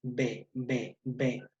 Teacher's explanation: entre todo no sólo en todos los órganos de tu articulación se retiene se obstruye totalmente el aire por un instante momentáneamente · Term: oclusivas explosivas